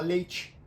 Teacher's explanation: vai ter gente que vai falar leite vai puxar o e pro i